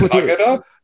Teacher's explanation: Accent on the first syllable.